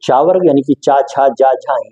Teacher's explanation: ऐसे वर्ण जिनको बोलते समय हमारी जीभ तालु को टच करती है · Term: तालव्य वर्ण